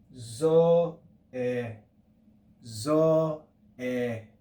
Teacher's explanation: you can hear there's a decline on that syllable that second syllable in the word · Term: grav accent, grave accent